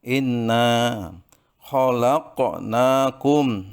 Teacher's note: Inna khalaqnakum, ada qalqalah, qaf berharokat sukun di tengah kalimat atau matinya asli, maka harus dibaca qalqalah sughra. Ya. Untuk memantul tapi tidak kuat.